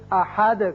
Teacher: احد ہے لیکن یہاں آیت ختم ہوتی ہے، لہذا دال ساکن ہو جائے گا اور اس کی صفت قلقلہ ادا کریں گے. احد کر کے پڑھیں گے.